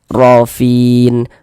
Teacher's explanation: huruf ro-nya dibaca tabkhim, dibaca tebal, sehingga pangkal lisan kita naik terangkat ke atas ketika kita mengucapkannya, ditebalkan huruf ro-nya.